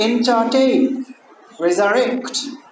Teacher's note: You have 3 syllables, but the last one is near the end. So then the ending syllable is to be stressed because it's a verb.